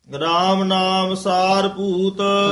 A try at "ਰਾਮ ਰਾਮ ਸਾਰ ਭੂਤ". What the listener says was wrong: ਰਾਮ ਨਾਮ ਨਹੀਂ ਹੈ ਇਥੇ ਰਾਮ ਰਾਮ ਸਾਰ ਭੂਤ